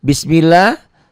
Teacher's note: Bismillah, lapad Allahnya dibaca tipis.